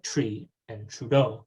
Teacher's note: the general posteriorization of t before r in words like tree and trudeau in most speakers of north american english